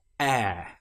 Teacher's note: it starts like the letter E or the sound E, the short vowel sound which we learned such as in bet. But here we stretch it out and make it longer.